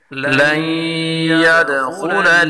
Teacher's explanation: دال میں قلقلہ کریں گے اور خا کو پڑھیں گے